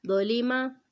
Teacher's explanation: لام باریک پڑھنا ہے، ٹھیک ہے، لام موٹا نہیں پڑھنا ہے